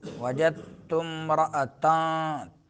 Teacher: حمزہ جو ہے حلق کے اس حصے سے جو سینے کے قریب ہے۔